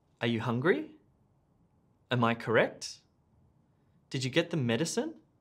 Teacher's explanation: if you're asking a yes no question notice the rising intonation